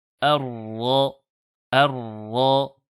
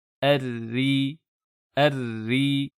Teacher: Lorsque le Ra porte une shadda, le takrir existe bien, mais est dissimulé, ce qui donne, lorsque la lettre Ra porte une shadda avec une fatha précédée d'une hamza maftuha, Ar-Ra, Ar-Ra. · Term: takrir qui est bien dissimulé